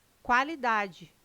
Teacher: O QU não é dígrafo, não é pronunciado com um som único. O quá traz um ditongo, dois sons UA.